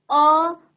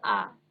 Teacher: उच्चारण में दोनों में बस समय का अंतर है, अ आ। तो अ को ही हम खींचते हैं तो वही आ हो जाता है।